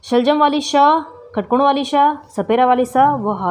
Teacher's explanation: वायु भी अधिक निकलेगी और उसके साथ साथ गर्मी जो होती है वो ज़्यादा निकलती है मुंह से और घर्षण पैदा होता है। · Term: ऊष्म व्यंजन